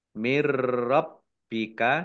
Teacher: Mirrabbika nun sukun bertemu dengan huruf ra, bacaan idgham bila gunnah, idgham masuk bi dengan la tidak, gunnah mendengung. Masuk tidak mendengung, maksudnya masuk langsung ke huruf ra, nunnya tidak dibaca. Dari Mirrabbika Tuhan roknya kamu dibaca double, baknya juga dibaca double, ada tasdidnya.